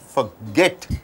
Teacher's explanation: So forget, 2 syllables are there. In a verb, this second syllable should be stressed.